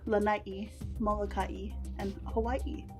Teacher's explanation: the glottal stop can also be heard in the names of the islands